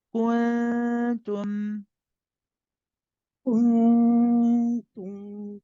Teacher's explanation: the ta is the tip of the tongue behind the upper 2 front incisors. You're not touching, you're just close. You only touch when you start saying the dhamma, when you start saying tu.